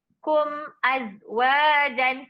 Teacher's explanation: dekat situ bacaannya kita tak ada qalqalah dekat kum